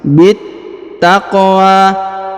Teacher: Huruf bi langsung sambung masuk ke huruf ta yang berharokat tasdid. Ini alif lam syamsiyah ya, karena setelah alif dan lam terdapat tanda tasdid ya pada huruf hijaiyah, maka kita langsung sambung masuk ke sini.